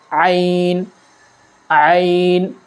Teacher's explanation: یہ حلق کے بالکل درمیانی حصے سے ادا ہوتا ہے۔ جہاں سے ہم نے ہا کے مخرج کو نکالا تھا اسے تھوڑا دبا کر پڑھیں گے